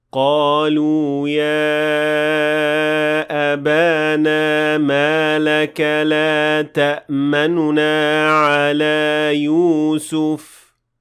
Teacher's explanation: I did not fully pronounce the dhamma on the noon, so I did not say لا تأمننا. · To perform ar-raom on this ayah, you will pronounce the noon with dhamma very lightly and quickly move on to the next noon